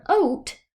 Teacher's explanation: in the word oat you only hear the long o you don't hear the a at all just the long o